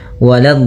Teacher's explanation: la-nya jangan sampai tebal, jangan waladh, tapi la-nya tipis. Waladh, baru di dot-nya yang tebal.